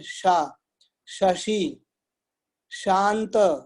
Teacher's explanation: इस शाह को बोलने के लिए आपको पैलेट में जीभ को टच करानी पड़ेगी।